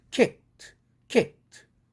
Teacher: 그래서 드가 트로 되는 것입니다. · silent letter고요. 드라는 철자에 대한 발음인데, 앞에 크가 무성음이니까 똑같이 무성음으로 바꿔줘야 됩니다. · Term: 무성동화